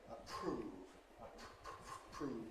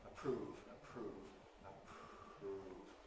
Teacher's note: The p and the k are at the beginning of a stressed syllable, which does have a strong vowel. But here the aspiration, again, takes the shape of devoicing the following consonant, the R or the R. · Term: voiceless R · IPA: [əˈpr̥uːv]